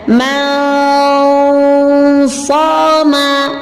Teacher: Ketika kita melafazkan dengan hukum ikhfa tadi dengan cara membaca yang pertama yaitu tahiyah, persiapan, maka contohnya adalah man shoma, maka makhraj nun senantiasa berlalu menuju makhraj huruf shad